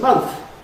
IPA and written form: mʌnθ (month)